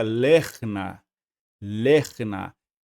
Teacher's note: Por ser uma sílaba acentuada, então nós também não vamos pronunciar esse Shivá. Então a sílaba termina aqui também, fica lerna, lerna. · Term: Shivá mudo